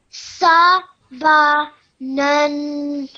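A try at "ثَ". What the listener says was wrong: This is not sa like hissing sound or like sword sound. It's tha. Thin. The tip of your tongue touch the end of your upper teeth. So it's tha. Tha.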